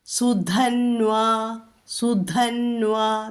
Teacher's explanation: ധ ഘോഷം, ന്വാ വകാരം കേൾക്കണം, ദീർഘമുണ്ട്